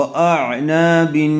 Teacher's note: عین کو اچھی طرح سے ادا کیجیے، اعنا، و اعناب، تنوین کے بعد حروف اخفاء میں سے تا آیا ہوا ہے اس لیے غنّے کے ساتھ اخفاء کر کے پڑھیں گے